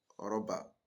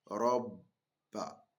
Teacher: once you have shadda on that particular letter, you are going to double the pronunciation of that particular letter that take the shadda. That's why we have robba.